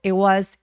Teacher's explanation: 자, it was 발음할 때 방금 제가 it was라고 하지 않고 it was. It was 하면서 중간에 t를 날려버리고 발음을 하지 않았죠. 이거 이유는 뭐냐면 워낙에 사람들이 많이 말하는 문장 구조라서 it was 하면은 말하기 불편하니까 it was 정도로 t를 없애고 발음하지 않는다고 봐 주시면 돼요.